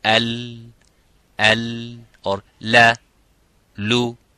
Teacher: on both sides, the air is going and flowing out to produce that sound of lam. So it says al, or la, lu.